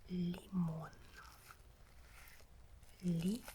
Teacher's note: Mon is the stressed syllable here.